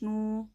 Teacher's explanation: वाव साकिन से पहले पेश वाव मद्दा एक अलिफ के बराबर खींच कर पढ़ेंगे।